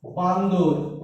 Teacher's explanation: একটা দ এর মধ্যে ঢুকে গেছে, তাই এটা ব্যঞ্জনাগম বলতে পারি।